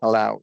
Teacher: We're stressing that second syllable.